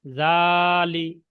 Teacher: এখানে জা, জাল খাড়া জবর জা, লাম জের লি। লাম টান হচ্ছে না, শুধু জালে টান হচ্ছে